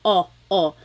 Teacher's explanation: I think of it like having a ball in your mouth your tongue gets kind of pushed back and down a little bit and the inside of your mouth is open and wide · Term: letter O